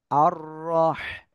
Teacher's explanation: রর উপরে জবর মোটা আওয়াজে পড়তে হবে, গলাটা চেপে পড়তে হবে